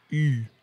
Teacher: The mouth is almost closed, but the lips are pushed way forward and up, as if you want to touch your nose.